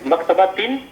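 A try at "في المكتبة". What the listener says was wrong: نہیں، الف لام ہے نا، فی المکتبتی.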